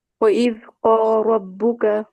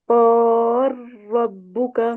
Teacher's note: لام کا را میں امام سوسی کا ادغام کبیر ہو جائے گا